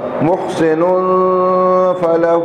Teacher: نون پر تنوین ہے, تنوین کے بعد فا ہے, یہاں بھی اخفا ہوگا